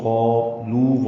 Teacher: قالو واو مدہ ہے، 2 حرکات لمبا کریں گے